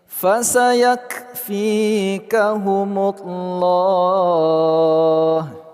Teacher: lafaz Allah kita baca secara tebal atau tafkhim.